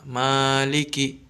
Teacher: ini harus dibaca panjang satu alif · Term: mad tabi'i